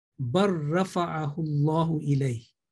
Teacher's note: Now, in this case, lam to ra, the assimilation will take place that lam will be not counted in pronunciation. And we will recite that like ba straight away to ra. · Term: idghamul mutaqaribain